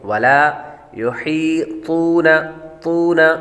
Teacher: طا حروف مستعلیہ میں سے ہے، اس لیے اس کو پر پڑھیں گے